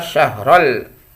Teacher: Alif Lam lagi tapi itu izhar Al qamariyah ya alnya dibaca jelas